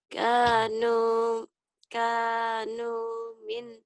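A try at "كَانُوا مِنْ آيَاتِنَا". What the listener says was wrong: A-nya panjang. A-nya panjang, ya-nya panjang. Kanu min ayatina ajaba.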